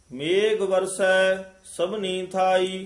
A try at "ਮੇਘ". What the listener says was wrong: ਇਸ ਨੂੰ ਮੇਘ ਉਚਾਰਨ ਕਰਨਾ ਹੈ ਘੱਗੇ ਦੇ ਨਾਲ। ਮੇਘ ਨਹੀਂ ਕਹਿ ਦੇਣਾ, ਮੇਘ ਕਵਾਂਗੇ ਤਾਂ ਗੱਗਾ ਲੱਗ ਜਾਏਗਾ। ਘੱਗਾ ਉਚਾਰਨ ਕਰਨਾ ਹੈ।